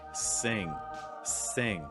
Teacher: you would raise the back of your tongue lower the front of your tongue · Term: ng sound